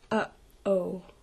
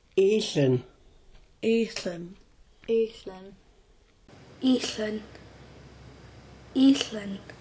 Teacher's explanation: a glottal stop it sounds like a catch or an abrupt stoppage of air in the throat